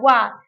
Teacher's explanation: जो हमारा व है उसका उच्चारण स्थान दांत और ओठ दोनों से होता है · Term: दंतोष्ठ्य